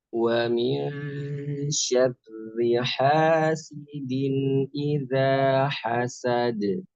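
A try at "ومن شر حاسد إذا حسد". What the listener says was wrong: Barakallahu fiik. Mumtaz.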